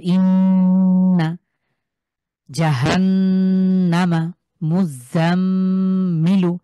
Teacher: আমি যখন গুণনা করছি তখন কিন্তু নাকের ভিতর দিয়ে আমার এই গুণনার আওয়াজটা আসছে